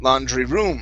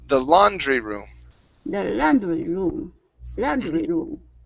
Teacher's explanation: emphasized the word room saying laundry room okay this is GNA the stress is going to be at the beginning